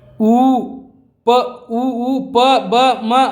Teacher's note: ತುಟಿಯಿಂದ ವರ್ಣನೆಗೊಳ್ಳುವಂತಿರುವ ಅಕ್ಷರಗಳನ್ನು ನಾವು ಏನಂತ ಕರಿತೀವಪ್ಪ ಅಂದ್ರೆ ಓಷ್ಠ್ಯ ಅಕ್ಷರಗಳಂತ ಕರಿತೀವಿ